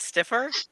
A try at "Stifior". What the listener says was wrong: Stifior. You just said Stifor. Yeah, you missed out the whole part of the I there.